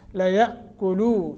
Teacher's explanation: یہاں حمزہ ساکن ہے، حمزہ ساکن جھٹکے کے ساتھ پڑھا جاتا ہے